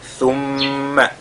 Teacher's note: thumma, on fait al-ghunna sur la lettre mim mushaddada